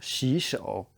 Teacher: two third tones together, the first third tone becomes a second tone. So it's 洗, it's the bike ramp, and then the shovel, 洗手.